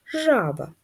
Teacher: жаба наголос падає на перший склад